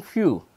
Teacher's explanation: lip against the upper teeth is the Lebo Dental consonant so it is produced by bringing the lower lip against the upper teeth